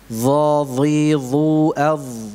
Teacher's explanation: Dha dibaca dengan tebal. Dalam setiap keadaannya, baik itu dalam keadaan berharakat maupun dalam keadaan sukun. Dha, dhi, dhu, adh, tebal, besar semua.